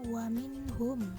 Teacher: nun sukun menghadapi huruf H yang berarti izhar